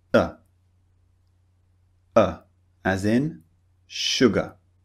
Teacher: no rounded lips no wide mouth no open mouth it's just neutral